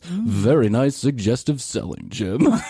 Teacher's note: he's got that vocal fry but way at the lower tones